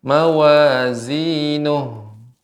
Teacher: setiap huruf ha yang berada di akhir kita berikan hams, aliran udara